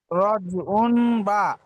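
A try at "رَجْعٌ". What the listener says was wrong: উন বলবেন না, এটা আইন দুপে মিম দুপেশ গুণনা করেন, গুণনাটা এটাকে।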